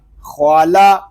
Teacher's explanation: خا زبر خا، لام زبر لا، خوالا۔ خوا کو پر پڑھیں گے لام کو باریک پڑھیں گے